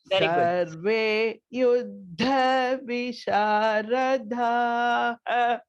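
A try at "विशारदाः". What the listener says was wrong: Da alpa prana, not dhaha, visharadaha.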